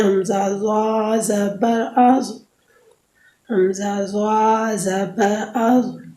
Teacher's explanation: زبان کی نوک جب انہی اوپر کے اگلے دونوں دانتوں کی نوک کی طرف والے آدھے حصے سے لگے تو اس سے ضا ادا ہوتی ہے